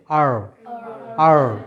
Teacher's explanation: জিহ্বাটা একটু ফোল্ড হবে এবং জিহ্বাটা তালুতে লাগবে এবং একটু কম্পিত হবে, একটু কাঁপবে।